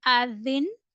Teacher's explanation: In stop condition, it will become Azin and Fatha will drop.